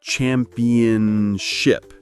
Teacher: in fast speech, championship often sounds more like championship with that middle syllable getting a bit softer